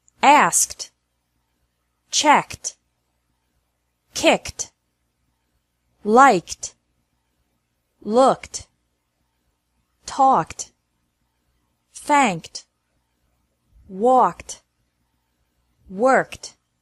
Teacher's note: e d is pronounced like T after verbs ending with a k sound